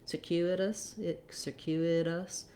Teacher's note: I really actually should write this more as a D, because in circuitous we use that flap because the letter T is between two unstressed syllables, and it goes by quickly. We have our voice on, just like we do D's in the middle of words.